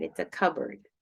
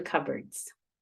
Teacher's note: when they're compound like that they tend to stress that first top part of the word